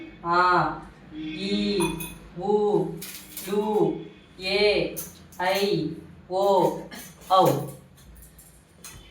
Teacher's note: ఈ అక్షరాలని రెండు మాత్రల కాలంలో ఉచ్చరించే అక్షరాలు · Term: దీర్ఘాలు